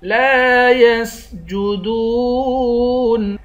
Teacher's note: یا کو سین کے ساتھ ملا کر سین کی سیٹی نکالیں گے، دال کو واو کے ساتھ ملا کر واو کو ایک الف کی مقدار کھینچ کر پڑھیں گے۔